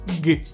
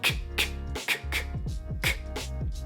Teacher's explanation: voiced consonants are just put your hand here and say g you can feel that your neck or throat is vibrating because your vocal cords are in use